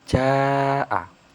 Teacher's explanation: Sebabnya ada mad thobi'i bertemu huruf hamzah dalam kalimat yang sama atau dalam satu kalimat dan cara membacanya itu dipanjangkan 4 sampai 5 harakat. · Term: mad wajib muttasil